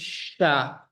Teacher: dia sifatnya hams jelas napas mengalir Sya deras kemudian rakhawa suaranya juga jelas dilepas sya sya sya · Huruf shin dia sifatnya hams, jelas, napas mengalir, sya, deras. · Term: huruf syin